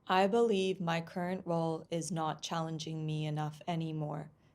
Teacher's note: Did you notice the flat tone? It's very difficult to follow what the speaker is saying.